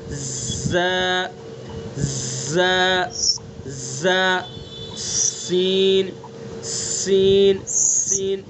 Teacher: زبان کی نوک ثنا سفلا کا کنارہ اور کچھ اتصال ثنا علیہ سے. اتصال کا مطلب ملانا، تھوڑا سا ثنا علیہ سے بھی ملائیں گے، چونکہ اوپر والے دانت ہیں اور ثنا سفلا نیچے والے ہیں.